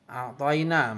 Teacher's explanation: mad layin karena ada tanda baca fathah bertemu dengan huruf ya mati, cara bacanya sekedar lunak dan lemas.